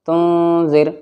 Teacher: سے پڑھنا ہے، تن زال را زر زر تن زر۔ اب را ساکن سے پہلے زال کے نیچے زیر ہے تو یہاں پر را باریک پڑھی جائے گی